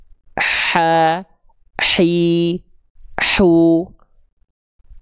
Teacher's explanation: Ha ha kecil dilafalkan dari bagian tengah tenggorokan kita, Teman-teman sekalian ya. Dia mengalirkan dengan aliran nafas yang karakternya berbisik. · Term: Ha lembut